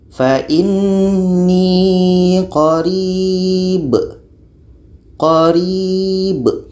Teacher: Contoh selanjutnya, ini pada akhir bacaan pada surah Al-Baqarah ayat 186 ini huruf mad iya. Ri ini dibaca panjang karena ada ya mati sebelumnya baris bawah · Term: mad arid li sukun